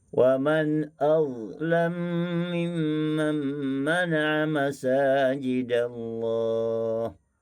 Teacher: Dan begitulah pada ayat berikutnya, pada kalimah azlam mimman, mim bertemu dengan mim, mim bertemu dengan mim, maka samalah juga membaca dengan iskan wa ikhfa, dengan idgham kabir dengan memasukkan mim yang pertama kepada mim yang kedua